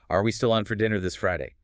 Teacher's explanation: The pitch goes noticeably up on Friday. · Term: rising question intonation